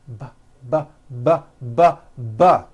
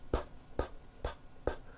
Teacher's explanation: You see that everything here stays the same. The only difference is my vocal cords are either vibrating or they're not vibrating. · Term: voicing